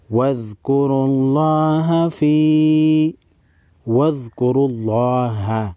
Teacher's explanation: لفظ اللہ کے لام سے پہلے والے حرف را پر پیش ہے. لفظ اللہ کو موٹا پڑھیں گے.